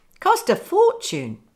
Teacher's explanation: the stress cost and four cost a fortune and of course the link between the T in cost to the following vowel